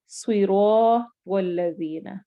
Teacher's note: الف کو 2 حرکت لمبا کر کے پڑھتے ہیں اور اسے الف مدہ کہتے ہیں · اب الف اور الف سے پہلے فتحہ ہے تو اس الف کو ہم تھوڑا سا لمبا کر کے پڑھیں گے، جس طرح صراط والذین. رو لمبا کیوں ہو رہا ہے؟ کیونکہ الف سے پہلے فتحہ آ رہی ہے